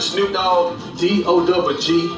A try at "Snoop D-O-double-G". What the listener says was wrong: It's Snoop D-O-double-G. No, it's Snoop D-O-double-G. It's already dog. You're already spelling it, so you can't. you're saying Snoop Dogg.